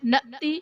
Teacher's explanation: نأتی حمزہ ساکنہ ہے، جھٹکا دے کر پڑھیں گے۔